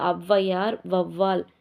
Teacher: அவ் வந்து தனியா சொல்றப்ப ரெண்டு மாத்திரை ஆனா அவ்வையார் அப்படின்றதுல ஒன்றரை மாத்திரை அப்ப அரை மாத்திரை குறைஞ்சிருச்சு வவ்வால் அப்படின்றதுலயும் வவ் அது வந்து ரெண்டு மாத்திரை · ஆனால் சொற்களில் முதல்ல வரும்போது தனக்குரிய 2 மாத்திரை அளவில் இருந்து குறைஞ்சி 1.5 மாத்திரை அளவில் ஒலிக்கிறது. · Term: அவகார குறுக்கம், ஔகார குறுக்கம்